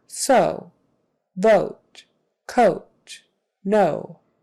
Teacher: we do tend to hold that O out a little longer than maybe in some other languages. So, O, so, vote, rather than so, vote, coat, no. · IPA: /oʊ/